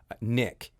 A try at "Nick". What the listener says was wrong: pull back on the K.